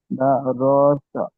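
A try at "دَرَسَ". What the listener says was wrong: যেমন দা রসা, দা রসা, দা রসা নয়, দা রসা। কোনো জায়গায় টান হবে না, দাল টান হবে না, র টান হবে না, সেন টান হবে না, কোনো জায়গায় টান হবে না, দা রসা।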